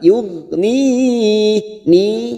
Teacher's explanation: Hati-hati huruf ghain, bukan qalqalah kita tahan. Yughni ni. Ada mat yang bertemu dengan huruf hidup dan dibaca waqaf, mat arid li sukun 4 harokat kita panjangkan.